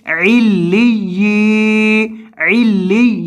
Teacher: یا مدہ ہے اس وجہ سے لمبا کرنا ہے